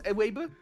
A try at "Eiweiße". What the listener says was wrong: It's Eiweiße. I actually did comment like this is approximately how you pronounce that. By the way, that thing doesn't make the B sound. It makes the S sound from hiss. Yeah, it makes the S sound from hiss.